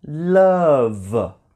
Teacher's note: This V sound is a voiced sound